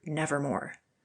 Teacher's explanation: the long o as the most sonorous vowel in connection with r as the most producible consonant